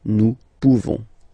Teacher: You don't pronounce the final S.